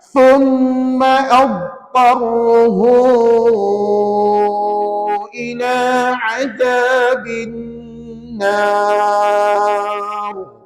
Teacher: huruf dhad itu tebal, ta itu tebal, ra itu tebal. Tiga-tiga huruf itu tebal belaka tuan-tuan. Jangan senyum tuan-tuan bila baca kalimah tadi ya.